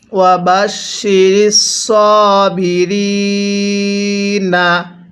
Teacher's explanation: ওয়াকফের সময় এখানে 3 আলিফ টান দিব।